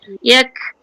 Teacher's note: sebut kaf itu dia ada lepaskan angin, bukan melantun, lepaskan angin. Yak angin tu terlepas keluar. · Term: huruf alham